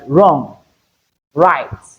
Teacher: Here, the sound dominates, the liquid sound dominates. The combination of WR, we are going to hear the R sound instead of W sound. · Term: W can be silent